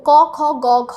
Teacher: ক, খ, গ, ঘ এগুলো আমরা কন্ঠ দিয়ে উচ্চারণ করি। · কন্ঠ ব্যঞ্জনের জন্য জীভের পেছনের অংশ এবং নরম তালু।